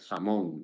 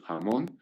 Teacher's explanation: la pronunciación bien como velar o bien como aspirada del fonema velar